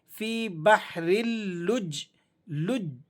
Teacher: فی بحرل لج، لج، دیکھیں جیم کو بھی ہم نے پڑھا، جیم ساکن ادا ہو گیا سختی کے ساتھ اور پھر اس کے بعد جیم متحرک بھی ادا ہوگا